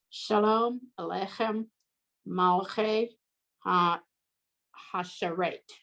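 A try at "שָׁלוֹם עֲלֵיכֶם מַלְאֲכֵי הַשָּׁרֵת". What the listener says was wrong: Yep, that third word is malache. Don't forget that aleph, even though it's silent, it's got that vowel under it.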